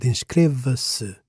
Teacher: The stress is still on the penultimate syllable of inscreva. Why? Because se is a clitic pronoun.